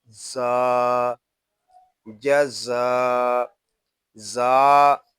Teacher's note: جیم زبر جا، زا الف زبر زا، جزا زا. یہ حروف صفیریہ میں سے ہے، اس کو ادا کرتے وقت سیٹی کی طرح آواز آئے گی. یہاں مد متصل ہو رہا ہے.